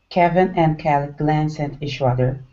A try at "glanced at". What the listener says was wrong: Okay, so you're almost there. You're leaving this T off. Glanced at. Glanced at.